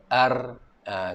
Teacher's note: Kalau dalam hukum tajwid dia ada satu sifat takrir. Saya pun takrir ni maksud dia getaran. Di hujung lidah dia ada getaran.